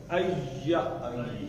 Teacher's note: اب یہ یا ہے, اب پڑھیں آئی. آئی آپ کی زبان جا کے لگتی ہے تالو کے ساتھ. آئی, اس کو ایسے پڑھ دیں, ایا.